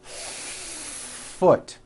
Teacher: Do you see how long I am holding that F? Now I know that's a little bit exaggerated, but you get the idea.